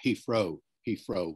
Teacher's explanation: Heathrow with an F rather than a TH